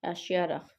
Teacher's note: Burada deməli sonuncu hecaya düşür vurğu. İkinci hecaya yox.